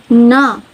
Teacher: voiced alveolar nasal